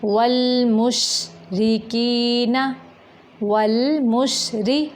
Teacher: वल मुशरी रा बारीक है, मेरा यहाँ पे रा मोटा नहीं करना।